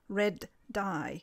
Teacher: to articulate red dye we must take a very short pause before the d sound red die the de is an example of a plosive consonant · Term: delayed plosion, Delayed plosion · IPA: /d/